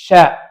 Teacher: நாவின் நடுப்பகுதி வாயின் மேல் பகுதியை நோக்கி உயரும் பொழுது ஷீன் உண்டாகும்